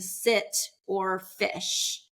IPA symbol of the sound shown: ɪ